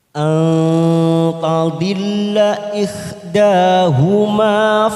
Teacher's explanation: Minasyuhada, syuhada ada mat yang bertemu dengan hamzah dalam satu kalimat, mat wajib mutasil kita panjangkan 5 harokat. Hadai anta nun sukun bertemu ta ikfa aqrab 3 ketuk kita samarkan bunyi nun sukun